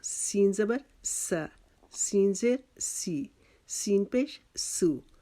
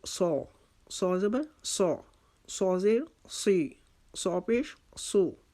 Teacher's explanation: سین کو ہم نے باریک پڑھا تھا، صاد کو ہم موٹا پڑھیں گے، یہ حروف مستعلیہ میں سے ہے، اس کو ہم نے موٹا کر کے پڑھنا ہے۔